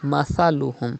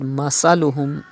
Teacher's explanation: You know, Tha is pronounced without whistle.